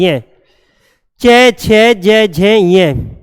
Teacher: ये आपका जो उच्चारण होता है ये तालव्य कहे जाते हैं। तालव्य, तालव्य का मतलब तालवे के द्वारा इनका उच्चारण किया जाता है। ठीक, ये ध्वनि तालव्य च वर्ग की।